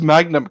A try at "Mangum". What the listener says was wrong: Mangum. Yeah, the N is before the G.